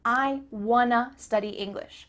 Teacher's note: the word to changes to uh